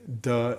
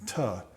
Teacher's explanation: As the D is closed, you start vocalizing. And then when you start the sound D, then you release after you've already started the sound.